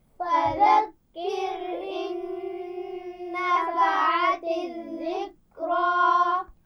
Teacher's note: فَذَكِّرْ فذكر إن نفعت الذكرى فذكر إن نفعت الذكرى فذکر کاف پر شد ہے لیکن اس لفظ میں ذال نرم حرف ہے نا، بغیر سیٹی والا، اس کا خیال رکھنا ہے.